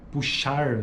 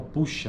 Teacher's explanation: ao invés de falar puxar esse R no final, a gente fala puxa, né? Puxa, ou termina, corta, né? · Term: apócope